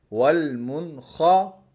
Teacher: نون ساکن کے بعد حروف اکفا ہے، یہاں پر حروف حلقی ہے، یہاں پر بھی اظہار کریں گے، غنہ نہیں کریں گے۔ والمنخا، نون زیر نی، والمنخنی۔